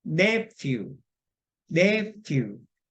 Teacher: PH는 아까 GH와 똑같이 푸 발음입니다. 푸 발음. F 발음이에요. 무성음 발음이고 윗입 아랫입술을 지그시 누르고 밖으로 소리를 내쉬면서 숨을 내쉬면서 투로 발음하는데 톤.